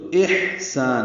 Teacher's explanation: دوسرے کی ضد ہیں، تو احسان حمزہ بالجہر ہوگا ادا اور ہا وسط حلق سے ادا ہوگا، اور اس میں حمز کی صفت ہے، اس میں نرمی ہے اور اس میں سانس جاری رہتی ہے